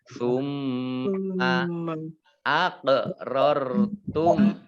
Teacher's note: ini ada mim tasdid dibaca mendengung, gunah ditahan ya. Ditahan ke 2 harokat.